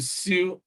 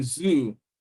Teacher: Then the alveolar fricatives, as you have in sue and as you have in zoo.